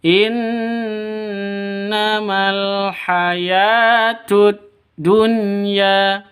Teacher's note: Haya panjang dua ketukan ada tanda berdiri di atasnya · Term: mad asli